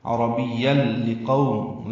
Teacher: قو بولین ہے، ہونٹوں کو گول کریں گے، آگے لیں گے. قو نہیں پڑھیں گے، لقو معروف طریقے سے ادا کریں گے.